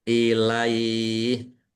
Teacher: Ilaih fathah ya bertemu dengan huruf terakhir yang dibaca sukun maka ini dibaca melunak atau melemah namanya mat layin. Ilaih mat layin layin itu halus melemah.